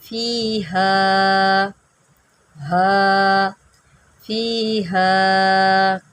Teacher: यहाँ पर मद्दे मुनफ़सिल है, इसको हम खींच के पढ़ेंगे, अड़ाई अलिफ खींच के पढ़ेंगे।